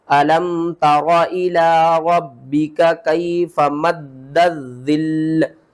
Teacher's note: درمیان میں ہم نے اس الف کو بھی چھوڑ دینا ہے اور اس لام کو بھی چھوڑ دینا ہے. 2 بار دال کو پڑھیں گے, 2 بار ظا کو پڑھیں گے, اور 2 بار ہی لام کو پڑھیں گے